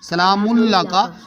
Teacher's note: نون کا ادغام کر دیا لام کے ساتھ